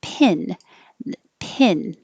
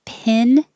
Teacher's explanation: pin the tongue is a little higher